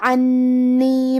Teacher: کلمت عنی میں حرف نون پہ تشدید ہے، لہذا ہمیں تشدید کو ظاہر کرنا ہے اور 2 حرف کے برابر حرف نون کو پڑھیں گے